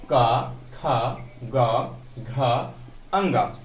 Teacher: तो इतने हम क्या है, कंठ से उच्चारित करते हैं